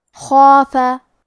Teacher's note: کیونکہ اس کے پہلے حرف الخا کا حکم ہے تفخیم، تو ہمیں مد الف کو بھی بھاری آواز میں ادا کرنا ہے